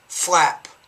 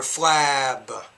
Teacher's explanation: with the P, because it's a voiceless consonant, the vowel sound should be shorter, flap. But then when you put the B on the end of the word, it's more flab.